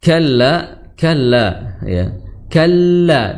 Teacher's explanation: ditahan terlebih dahulu untuk menunaikan sifat bainiah ya bainiah namun tidak terlalu panjang